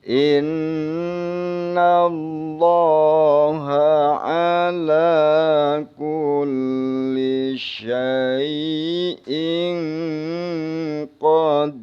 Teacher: In dengung guna in, jangan innallah, jangan dibaca innallah tapi dengung, 2 harokat